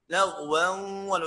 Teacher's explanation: انه التنوين ان جاء بعديه حرف الواو ندغمه ونسميه ادغام بغنة